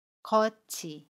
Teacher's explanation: 겉의 받침 티읕 뒤에 조사로 쓰이는 모음 이가 오면 받침 티읕이 이응 자리로 가서 겉이가 됩니다. 여기에서 티읕과 조사로 쓰이는 이가 만나면 t를 치로 발음해요. 그래서 거치가 됩니다.